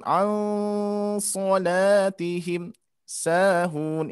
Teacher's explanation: Seperti nun mati bertemu sod itu ikhfa harus ditahan. Al-solatihim sahun ya seperti ini.